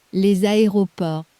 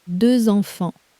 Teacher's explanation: That's the liaison. When the next word starts with a vowel, the sleeping S wakes up as a Z, purely so the sentence flows.